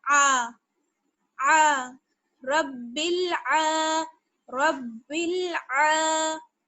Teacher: अक्सर लोग गलती क्या कर रहे हैं कि आइन को मोटा पढ़ रहे हैं, तो आइन को मोटा नहीं पढ़ना है बल्कि बारीक पढ़ना है। औ ऐसे नहीं पढ़ना है आ, यानी जब आप आ पढ़ेंगी तो आपके होंठ जो है वो थोड़े से चिर जाएंगे, और औ पढ़ेंगी तो होंठ जो है वो गोल हो जाएंगे।